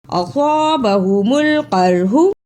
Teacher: الف مدہ بھی ساتھ ہے، اس پہ تھوڑی دیر لگانی ہے اور صاد کو موٹا پڑھنا ہے، اور خا با پر زبر، اسے جلدی پڑھنا، ہاں پہ پیش، اس کو بھی جلدی پڑھنا۔